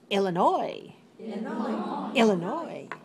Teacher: 3 syllables. Stress the third.